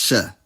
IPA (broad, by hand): ʃ